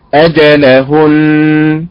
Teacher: هكذا اجلهن طبعا وقفا هناك ساكنان النون المشدده عباره عن ساكنين في حاله الوقف النبر على حركه الهاء